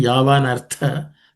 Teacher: this tha is aspirated.